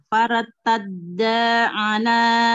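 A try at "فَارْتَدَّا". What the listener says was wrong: Faratadda. Jangan keseret. Faratadda, tebalkan ro sebelumnya fathah, ro sukun.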